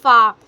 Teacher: ऊपर वाले दांतों का किनारा और निचले होंठ के तर हिस्से से अदा होता है